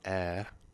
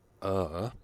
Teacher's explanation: the vowels are different for travel it's a and for trouble it's uh